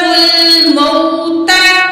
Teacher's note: इस वाव को खींच के नहीं पढ़ा जाएगा क्योंकि वाव से पहले ज़बर है, वाव लीन है